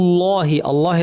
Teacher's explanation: লামও ভারি হবে কারণ এখানে আগে পেশ আছে